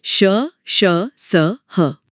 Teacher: इनके उच्चारण में हवा मुंह में एक संकरे रास्ते से निकलती है जिससे घर्षण पैदा होता है और उसी से एक गर्मी का एहसास होता है। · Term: संघर्षी व्यंजन